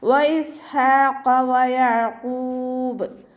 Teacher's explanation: ഖാഫ് ഇസ്തിഅലാൻ്റെ letter ആയതുകൊണ്ട് ഉയർത്തിയിട്ട് ഉച്ചരിക്കുക കേട്ടോ. നാവിൻ്റെ ബാക്ക് നന്നായിട്ട് മുകളിലേക്ക് പൊക്കി കൊടുക്കുക.